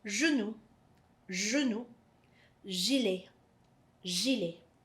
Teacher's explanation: when G is followed by an E or G is followed by an I, it's a J sound, and it almost vibrates in the tongue